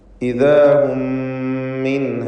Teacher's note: മിൻഹ എന്നതിലെ സാക്കിനത്ത നൂനിന് ഇൽഹാർ ഹൽഖി നൽകി മണിക്കാതെ വെളിവാക്കേണ്ടതാണ്.